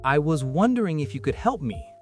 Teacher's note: And the melody peaks on wondering, then falls.